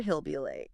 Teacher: In fast speech or just casual connected speech, the H sound at the beginning of words like he, him, her, it often disappears. It's called H dropping.